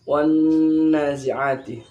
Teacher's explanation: Ini dibaca khayshum, dengung. Bunyinya di pangkal hidung. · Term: gunnah musyaddadah